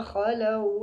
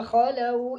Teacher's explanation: واو لین ہوگا، اس کو لانگ بھی نہیں کرنا، لمبا بھی نہیں کرنا ہے اور جھٹکا بھی نہیں دینا